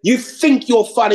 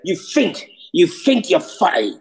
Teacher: TH is pronounced with a F.